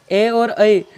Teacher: ए और ऐ, इनका उच्चारण स्थान कंठ तालु होता है। जैसे ए का निर्माण किससे हुआ है, ए और ई, ए धन ई मिलकर ए का निर्माण होता है।